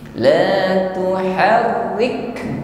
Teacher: La tuharrik, rik ditekan, lalu ada nafas yang terlepas di situ. La tuharrik, jadi tidak tertahan. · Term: hamas